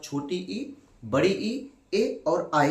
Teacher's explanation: चार स्वर ऐसे हैं जिनका उच्चारण हम लोग जीभ के अपने अगले या सबसे आगे वाले भाग से करते हैं, ठीक है। इनको कहते हैं अग्र स्वर भी कहते हैं, अग्र भाग को ही क्या कहा जाता है, इसी को अग्र स्वर कहते हैं।